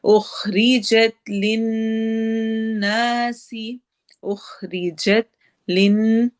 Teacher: ہے، اخریجت للناسی، اخریجت لن، نون غنہ، ناسی الف مدہ اور سین میں سٹی والی آواز ہے